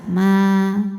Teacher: kalau berhenti hukumnya Mad Thobi'i karena ada Alif didahului fathah panjangin dua harakat Ma berhenti panjang Kalau diteruskan jadi pendek gugur pemanjangnya namanya takhalus